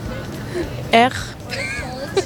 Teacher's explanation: ça vient de la gorge. On va au fond de sa gorge et on racle.